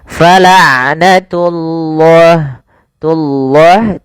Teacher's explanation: pada lafal ain sifat bainiyah tidak terlalu ditahan suara ainnya dan tidak terlalu dilepaskan. Fala'natullah tullah, tunya jangan tebal, jangan fala'natullah enggak, tapi dia fala'natullahi baru lafal Allahnya tebalkan.